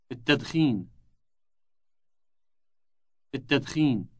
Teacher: note the elongated initial T sound